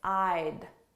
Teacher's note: So notice how soft that D is, I'd. But when I say it with a word after it, the sounds very much blend together.